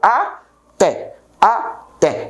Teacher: Então, dissílabo porque tem duas sílabas e é oxítono porque é a última sílaba que é acentuada. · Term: dissílabo oxítono